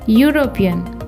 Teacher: no doubt the word starts with the vowel letter e but it sound like consonant sound yaw